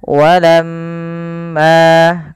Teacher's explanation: usahakan kita menahan daripada bunyi suara mim karena di sini dilihat mimnya berharakat tasdid Apabila ada mim berharakat tasdid maka ia kita nama an dengan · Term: ghunah